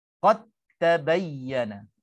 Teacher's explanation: Jadi kesimpulannya, bab mutajanisain idgham ini, jadi apabila kita bertemu da dengan ta, ambil contoh yang pertama, maka kita idghamkan dal masuk terus kepada ta, dan dal itu dah tak wujud lagi. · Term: idgham mutajanisain